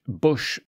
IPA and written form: bʌʃ (bush)